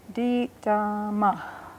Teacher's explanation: It starts high and goes low. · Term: falling pitch